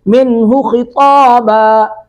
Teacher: من نون ساکن کے بعد ہا ہے، یہاں پہ اظہار کریں گے